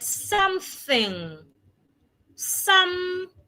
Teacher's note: The voiceless th sound sounds like letter T. Except that your tongue must be outside.